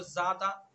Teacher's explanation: ذا کو اس کے مخرج سے زبان کے نوک ثناولیہ کا کنارہ، اس کے اندر سختی نہیں آئے گی، بالکل بھی زا نہیں پڑھیں گے اس کو